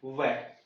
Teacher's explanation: नीचे का होठ ऊपर के दांत, इसके साथ बोलना है